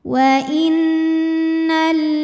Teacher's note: lamnya menghadapi huruf Syamsiyah yaitu lam Kenapa huruf syamsiyahnya lam karena lam tasdid ini terdiri dari dua lam lam sukun dan lam fathah jadi cara bacanya dimasukkan ke lam kedua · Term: Idgham Syamsi, idgham syamsi